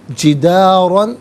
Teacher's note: فا وجد، فی علیحدہ، ہا علیحدہ ملا کر پڑھیں گے، فی ہا، فوجد فیہا جدارا، را پر دو زبر کی ترمین ہے، اسے پر کر کے پڑھا جائے گا